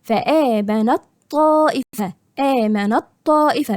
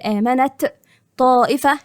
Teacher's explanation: التاء هتحذف تماما حصل لها ايه اتحولت الى طاء ودخلت في الطاء اللي جنبها بقت طاء مشدده هنطقها طاء مشدده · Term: ادغام كامل